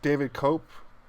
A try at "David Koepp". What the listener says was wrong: I don't think you elongate the O though.